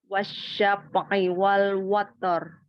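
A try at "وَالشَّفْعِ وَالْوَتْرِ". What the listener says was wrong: Tambahkan fa-nya hamaskan lagi. Wasyaf'i. Hamas pada fa sukunnya. Wasyaf'i wal watar. Syaf. Makhraj dari huruf fa di mana? Bibir bawah bagian dalam ketemu dengan ujung gigi seri atas. Ada af.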